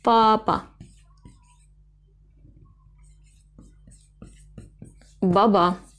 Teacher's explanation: heceden oluşan ve ilk hece vurgulu dur baba ba ba ba Yani vurgulu sesli harfler diğer hecedeki harflere göre bir kat daha uzun ve yüksek